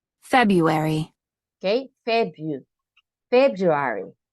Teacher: We don't really pronounce the R.